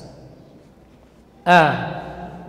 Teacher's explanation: Syani'a, a jelas ya, huruf yang keluar dari pangkal tenggorokan. A tipis, posisi lidahnya istifal, kemudian suara juga tidak terangkat ke langit-langit atas.